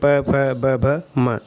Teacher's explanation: तो प का उच्चारण स्थान होता है ओष्ठ, यानी कि होंठ। प वर्ग प, फ, ब, भ, म, इन समस्त 5 वर्णों का उच्चारण स्थान ओष्ठ यानी कि होंठ होता है, और प वर्ण का उच्चारण स्थान भी होंठ होता है।